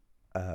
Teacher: like a lazy vowel, a kind of middle of the road, right? very easy to make and it's actually the most common sound in all of the English language, right? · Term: schwa